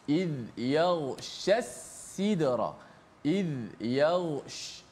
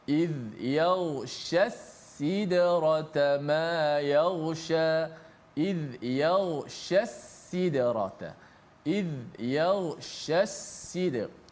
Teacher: Maka kita nak sebut kena hati-hati, biar pertama shin kemudian sin. Iz yaghshas sidra, iz yaghsh, itu shin.